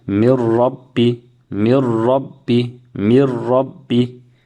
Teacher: So we cannot even hear the noon sakin because it's merged into the ra. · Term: idgham